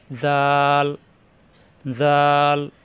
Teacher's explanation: দাল দাল দাল, উপরে একটি নক্তা আসলে জাল, নক্তা ছাড়া দাল, উপরে নক্তা আসলে জাল, জাল নরম করে উচ্চারণ, জিহ্বার আগা উপরে দাঁতের আগায় লাগিয়ে